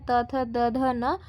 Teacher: त वर्ग यहां पर दंत से होता है